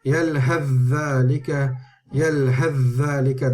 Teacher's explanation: But if you are continuing, then you would read this with al-idgham. You would actually turn the tha straight into the dhal.